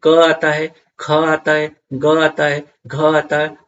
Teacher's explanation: क वर्ग जो होता है ना वो कंठ से निकलता है